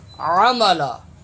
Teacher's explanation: عین زبر ع، حلق سے ادا ہوتا ہے